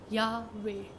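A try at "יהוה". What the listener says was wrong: You cannot pronounce that. There is no vowels. You adding WH. You can observe in your breathing breath.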